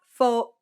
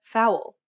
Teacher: You can think of it like gliding from one vowel to the next very quickly